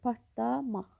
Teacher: Çünki partlamaq sözündə l samiti d samitinə çevrilir.